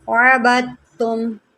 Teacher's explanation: اس لفظ کو آپ سمجھیں، یہ کافی زیادہ مشکل ہے، دیکھیں اگر پہلا حرف متحرک ہو، دوسرا ساکن ہو، تیسرا مشدد ہو، ہم متحرک کو مشدد کے ساتھ ملاتے ہیں، دال ہم نے یہاں پر چھوڑ دینی ہے